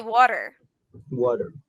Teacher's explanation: So sometimes that T makes that D sound